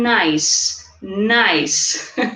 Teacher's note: there's a connection here between the final consonant sound in N and the initial vowel sound in ice